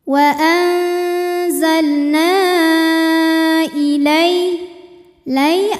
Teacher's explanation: karena ada ya sukun didahului harokat fathah, maka dibacanya lembut atau lunak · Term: harfulin